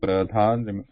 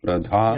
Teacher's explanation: note that it's a aspirate with the mahaprana. The breath has to come out when we say dha